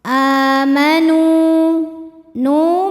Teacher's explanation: Mad Thobi'i dahiri sebab ada wau sukun yang sebelumnya berbaris damah maka huruf nun kita panjangkan dua harakat saja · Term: mad tabi'i dhahiri